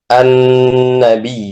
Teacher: kemudian digabung menjadi tasdid. Maka cara membacanya adalah adanya guna miqdar harakatini dengan ukuran dua harakat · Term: harfu ghunatin musyaddad